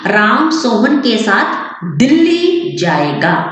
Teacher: दिल्ली शब्द मैंने बोला, दिल्ली के ऊपर ज्यादा स्ट्रेस पड़ा। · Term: वाक्य बलाघात